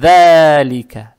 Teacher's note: Далее стоит буква «даль», межзубная она, ее надо правильно произносить.